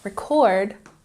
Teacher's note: emphasis on the second syllable, this is a verb